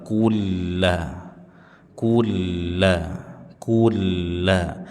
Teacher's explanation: Kula lam bertasydid. Berikan penekanan dan posisi rahangnya dibuka.